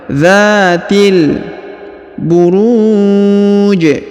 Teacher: huruf ru perhatikan dipanjangkan boleh dua boleh empat boleh enam harakat ya karena di depan huruf ru terdapat wau sukun sebelum huruf